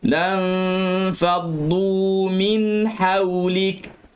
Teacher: Nun mati bertemu dengan fa, sekali lagi dengung nipis sahaja.